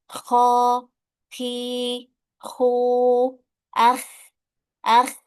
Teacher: jadi huruf kho itu punya sifat hamas, punya sifat mengeluarkan angin, ya. Kho, khi, khu, ah, ah, ya itu udah pasti keluar angin dia karena dia mendorong udara dari dalam.